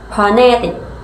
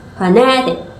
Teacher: The primary stress is on the second syllable, phonetic, giving the word its main emphasis.